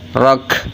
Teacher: Jadi kafnya keluar angin, ro-nya dibaca tebal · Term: hamas